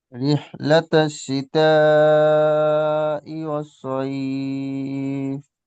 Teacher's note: মাদ্দে মুত্তাসিল, এখানে আরো বেশি টানতে হবে।